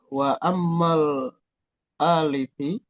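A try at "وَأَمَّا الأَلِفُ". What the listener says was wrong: Kenapa jadi alifi? Alifi.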